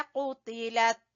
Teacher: क़ाफ को जबान की जड़ से, ये क़ाफ मोटा है